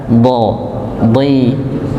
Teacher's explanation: Tepi lidah bertemu dengan geraham atas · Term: huruf dha